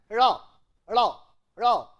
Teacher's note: back of the tongue touches the upper cavity and produce that sound, that is why it is called tap or flap